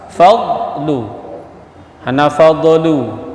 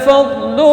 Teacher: dad yang mati tepi lidah dengan geraham atas, fadlu hana fadlu, ya, bukan enggak ada qalqalah, bukan huruf qalqalah.